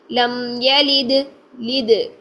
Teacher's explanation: دال ساکن ہے تو ساکن حالت میں دال کی آواز کو ہلائیں گے، میم کو نہیں ہلانا ہے